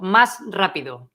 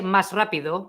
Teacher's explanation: when a word finishes with S and then the next word starts with R, they don't pronounce the S. They just kind of miss it out.